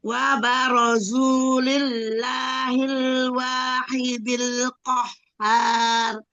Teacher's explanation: Wahidil, hak tengah tenggorokan